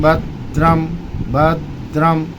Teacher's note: भद पर जीभ दांत पर लगी वहीं पर जीभ को रोके रहिए। जीभ मत हटाइए। वहीं से बोल दीजिए रम। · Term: आधा अक्षर